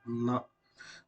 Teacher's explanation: நாவின் நுனி மேல்வாயின் பல்லின் அடிப்பகுதியையும் தொடுவதால் பிறப்பது